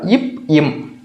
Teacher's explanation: இம் நீங்க ரெண்டு லிப்ஸ் இது மேல் உதடு இது கீழ உதடுன்னு வச்சுக்கோங்க ரெண்டு லிப்ஸ் க்ளோஸ் பண்றப்பயே நமக்கு இப் இம் அப்படின்ற எழுத்துக்கள் பிறக்குது